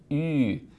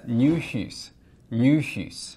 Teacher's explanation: There's a vowel in High Valyrian that's written with a Y. This thing is not pronounced E. It's pronounced U. In other words, it sounds just like E, but you round your lips. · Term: U vowel